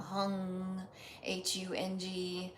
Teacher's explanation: that ng sound is almost swallowed. The back of your tongue has to go to the soft pallet and right about here.